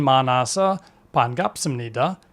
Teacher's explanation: the ㅁ (미음 mieum) is pronounced abruptly, so it can sound like a B.